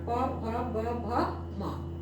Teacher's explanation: दोनों होठ जो है आपस में स्पर्श कर रहा है छू रहा है · इसमें पूरा स्पर्श कर रहा था, पूरा। प बोलने में पूरा होठ एक दूसरे को छू रहा है। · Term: ओष्ठ